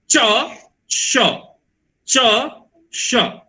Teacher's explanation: च बोलते समय ओठ थोड़ा सा गोल हो जाता है और जीभ जाकर के तालू को छूता है, तो वैसे ही हमको बोलना है च श। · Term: तालव्य श